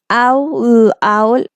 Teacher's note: it's open first then it come closer it gets close